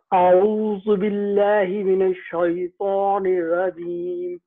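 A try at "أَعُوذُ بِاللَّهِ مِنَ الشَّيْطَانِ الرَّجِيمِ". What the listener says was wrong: را کو موٹا، شیطان الرجیم۔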